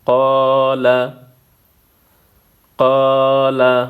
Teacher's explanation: الف مدہ کو ایک الف کے مقدار کھینچنا ہے